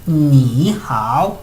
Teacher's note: mis tonos como que bajaron y subieron bajaron y subieron porque porque el símbolo me lo está indicando estos son tonos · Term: tono 3